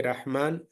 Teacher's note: when you see Rahman, the ra is heavy.